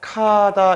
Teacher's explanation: 기억이랑 히읗이 합쳐져서 카다 이렇게 바뀌죠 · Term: 자음 축약 현상